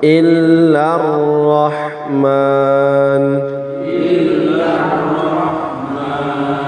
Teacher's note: Lar langsung masuk ke ra.